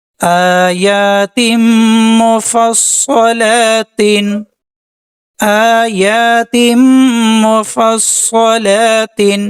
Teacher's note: میم اور صاد پر شد ہے، دونوں کو ڈبل پڑھیں گے۔